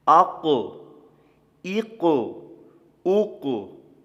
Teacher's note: یہ 2 نقطوں والا قاف یہ مستعلیہ حروف میں سے ہے، موٹا پڑھا جائے گا